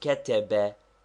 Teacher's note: If all the vowels are short, as in كتب, the first one is slightly accented.